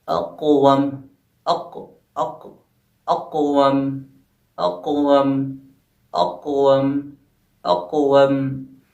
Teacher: قلقلہ صغریٰ میں آواز ہماری کم ٹکرائے گی، یعنی جو حروف ہے وہ جو ہے ہمارا کم ٹکرائے گا۔